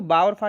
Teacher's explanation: दंतोष्ठ होते हैं। इन्हें दंत से ही बोला जाता है और ओष्ठ से, दोनों से मिलके बोलते हैं।